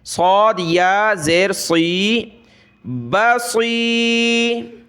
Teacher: دیکھیں یہ صاد ہے، اس کو موٹا کر کے پڑھنا ہے، سین کو ہم باریک پڑھتے ہیں لیکن صاد کو موٹا پڑھنا ہے